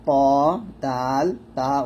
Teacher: জিহ্বার আগা সামনের উপরে দুই দাঁতের গোড়ার সঙ্গে লাগিয়ে ত দাল তা উচ্চারিত হয়